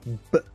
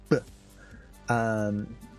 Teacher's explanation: when you hear the actual B sound, the B, that's the lips opening and the sound exploding out. These are plosives. · The type of sound is called a plosive, and it's basically B. It explodes. B. So the mouth has to be closed to form that sound, but the actual sound itself happens after, or as the mouth opens.